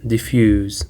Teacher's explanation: Diffuse actually is of 2 syllables, and the stress is on the second syllable.